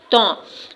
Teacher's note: जबान की जड़ ऊपर के दो दांतों से लग रही है तो त अदा हो रहा है